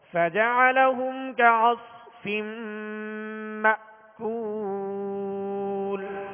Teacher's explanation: مأکول میں حمزہ ساکن ہے، جھٹکا دے کر ادا کریں گے، مگر جھٹکا اس طرح نہیں کہ آواز میں جنبش پیدا ہو جائے یا زیادہ تکلف پیدا ہو.